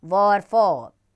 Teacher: दंतोष्ठ्य नीचे का होंठ और ऊपर का दांत।